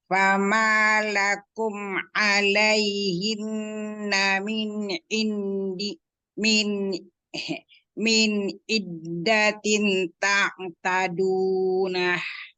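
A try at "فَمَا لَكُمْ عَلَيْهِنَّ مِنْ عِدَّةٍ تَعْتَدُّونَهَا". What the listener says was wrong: Nggak boleh begitu. Iddatin ta'tadunaha. Dunya kan panjang 2 harokat. Tapi bukan dun kalau yang ini. Dunaha.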